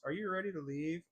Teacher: Are you ready to leave? With the voice lifting on leave